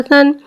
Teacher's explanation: सा को एक अलिफ यानी दो हरकत के बराबर खींच के पढ़ेंगे। सा नरमी वाला हुर्फ लिहाजा इसमें सीटी नहीं आएगी, इसे बगैर सीटी के पढ़ेंगे